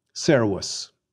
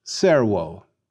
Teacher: we'll pronounce that V like a W